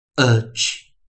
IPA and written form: ʌtʃ (-uch)